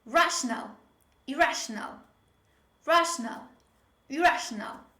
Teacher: We don't have double R when we pronounce this word. Although there are two R's when we spell this word, there is only one R when we pronounce it.